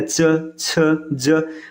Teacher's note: च, छ, ज, कुछ घर्षण के साथ वायु बाहर निकलता है तो इसको स्पर्श संघर्षी कहते हैं।